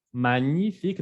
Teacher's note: En francés, la G con la N se pronuncia ñ como si fuera una ñ.